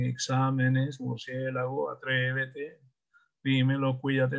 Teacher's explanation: Fíjese que todas tienen el acento en la antepenúltima sílaba. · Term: esdrújulas